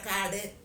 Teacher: வாயை விரித்து சொல்கிறோம் அது வந்து தனக்குரிய மாத்திரையில் குறைந்து ஒலிக்கிறது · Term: குற்றியல் உகரம்